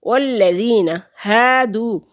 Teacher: واو ساکن سے پہلے لفظ پر پیش ہے تو واو مدہ ہے، ایک حرکت کے برابر لمبا کریں گے اس کو